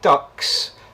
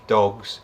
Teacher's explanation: The only difference is how much air we're pushing out. So when we say ducks, we're pushing out a little bit of air. When we're saying dogs, no particular air is coming out there. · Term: paired phonemes